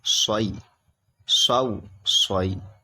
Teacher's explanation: یہ صاد نکلے گا، سیٹی جیسی آواز نکلے گی